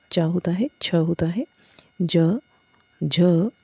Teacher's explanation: तालु और जीवा के स्पर्श से बोला जाने वाला वर्ण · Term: तालव्य वर्ण